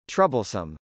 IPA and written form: trˈʌbəlsəm (troublesome)